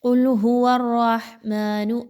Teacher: بہت سے لوگ اس کو پڑھتے ہیں قل هو الرحمن، یہ بہت ہی غلط انداز ہے۔ ہا کے مخرج پر خاص توجہ دیجیے، نرمی کے ساتھ اس کو پڑھیے، حلق کے درمیانی حصے سے نکالنے کی کوشش کیجیے